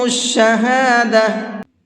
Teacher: جب گول تا پر آیت کرتے ہیں تو گول تا ہا بن جاتی ہے، اس لیے اس کو شہادہ پڑھا ہے۔